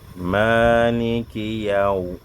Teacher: Quand tu dis Yaw, tes 2 lèvres doivent être tendues vers l'avant afin d'être arrondies. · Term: waoun